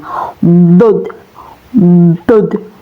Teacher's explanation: Huruf dod ini keluar dari tepi lidah baik sebelah kanan maupun kiri ya, Teman-teman. Huruf dod ini ya keluarnya dari tepi lidah baik sebelah kanan maupun kiri